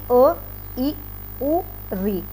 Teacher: जैसे कि अ, इ, उ, री, ये जो स्वर हैं ये हमारे ह्रस्व या लघु स्वर में आते हैं, क्योंकि इन्हें बोलने में बहुत ही कम समय लगता है, या कह लीजिए केवल एक मात्रा का समय लगता है।